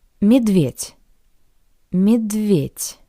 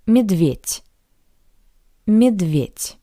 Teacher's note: Similarly to the previous word, the voiced consonant d sounds like the paired voiceless consonant t